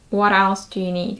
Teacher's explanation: If you notice, the T is dropped.